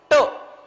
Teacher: मूर्धन्य म्हणजे जीभ वाकडी करायची